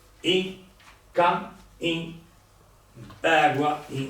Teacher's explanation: Se andiamo a vedere, in effetti non è che diciamo in, pronunciamo una U molto stretta. Un nasale, no? Un che diventa I e poi naturalmente siccome dobbiamo parlare chiaro diventa I, però non si scrive.